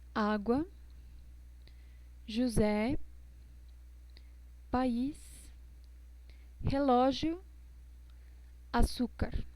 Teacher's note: el acento agudo, que es como si fuera nuestra tilde, da la sílaba tónica, pero tiene una característica también de dar un sonido abierto